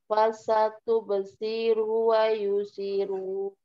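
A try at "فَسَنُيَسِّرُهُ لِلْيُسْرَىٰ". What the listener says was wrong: Wa yuba, wa yuba. Ada yang terlewatkan di situ, ada huruf ba?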